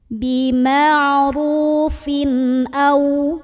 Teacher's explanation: cara baca dari tanwinnya jelas, bunyinya masih bunyi asal, bunyi tanwin, bunyi an dan tidak perlu ditahan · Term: idhar halqi